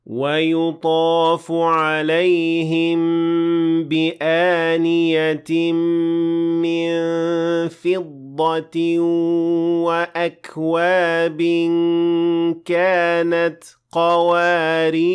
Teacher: when I stopped at this word, I said قَوَارِيرًا with an alif at the end of the word of 2 counts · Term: natural med